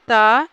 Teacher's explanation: दंत में आता है त अल्प प्राण अघोष